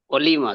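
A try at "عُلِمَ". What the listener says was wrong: অলিমা নয়, উলিমা, উ। উ, ঠিক আছে, অলিমা।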